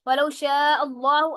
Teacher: اللہ کا لام جو ہے وہ موٹا پڑا جائے گا کیونکہ حمزہ کے اوپر زبر آ گئی ہے.